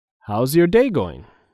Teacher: how's your is all said together